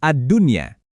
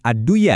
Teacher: Di sini ada nun mati ketemu ya dalam satu kata. Jadi, bacanya wajib jelas. Adunya. Sekali lagi bukan adduya ya. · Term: izhar mutlak